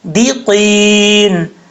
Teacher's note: کر کے پڑھیں گے، دیقین، دال زیر دی، دے نہیں پڑھنا، قاف حروف مستعلیہ میں سے پر پڑھا جائے گا ، قاف کے بعد یا مدہ ہے، ایک الف کی مقدار